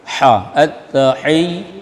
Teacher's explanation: Ha di tengah tenggorokan.